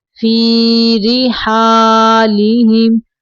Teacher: را کے نیچے زیر ہے، را کو باریک پڑھنا ہے